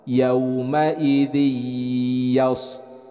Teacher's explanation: Ini adalah idgham bi gunnah. Idgham itu artinya memasukkan, yaitu memasukkan suara tanwin nun ke dalam huruf ya. Jadi dibacanya bukan yauma idin yasduru, tapi yauma idzi.